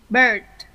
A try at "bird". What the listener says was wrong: Từ từ em cong bóng lưỡi rồi. Cứng môi thôi. Không cần phải cong bóng lưỡi đâu. Của em là bird. Sử dụng cuống lưỡi hơn nhiều.